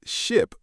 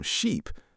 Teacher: Vowel length. Specifically, the difference between short I and long e. · the difference between short I and long E, the sound that separates ship from sheep, bit from beat, and live from leave